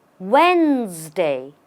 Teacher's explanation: The D does not exist in the pronunciation.